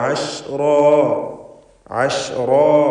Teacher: ഐൻ വ്യക്തമായി മഖ്റജിൽ നിന്ന് ഉച്ചരിക്കണം. തൊണ്ടയുടെ മധ്യം.